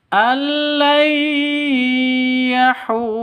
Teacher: Kalau kita berhenti di sini yahur, maka bukan mad asli lagi, tapi berubah menjadi mad arid li sukun. Panjangnya pun berubah. Boleh 2, boleh 4, boleh 6 ketukan.